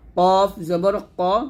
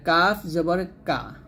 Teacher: কফ জবর ক মোটা আর কাফ জবর কা পাতলা